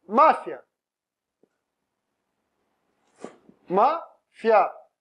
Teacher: Agora é um ditongo crescente, né? Porque eu tenho semivogal mais a vogal.